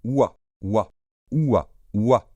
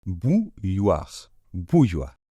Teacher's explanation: Et ce o suivi du i, ça fait son oua. Comme si c'était un ou suivi d'un a, et vous allez très vite. Oua, oua, oua, oua.